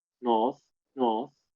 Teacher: It's friction all around. It's not a plosive. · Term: fricative